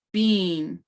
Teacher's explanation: the little diacritic mark goes up and then down on the E sound